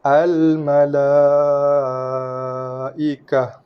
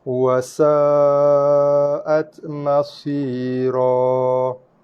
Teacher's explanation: Mad wajib muttasil dibaca dengan kadar 4 harakat ataupun 5, boleh pilih mana satu.